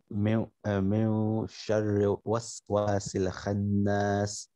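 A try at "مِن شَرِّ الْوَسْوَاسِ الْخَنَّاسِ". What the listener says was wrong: Min sharril. The lam has a sakin. Min sharril. Khannas. Kha is full mouth. Not khannas. Kha.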